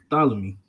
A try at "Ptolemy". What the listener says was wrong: Ptolemy. The P is silent.